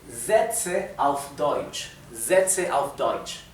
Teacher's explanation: tenemos una s al principio de una palabra la s se pronuncia Z no es s